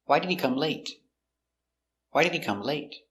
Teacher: it's an information question so the intonation goes down at the end